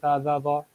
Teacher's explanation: زبان کی نوک جو سامنے کے جو 2 دانت ہیں جن کو ثنائیہ علیہ کہتے ہیں، اگر ان کے ساتھ لگائیں گے تو نرمی سے آواز ادا ہوگی